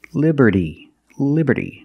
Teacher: between vowels so it's pronounced like a fast D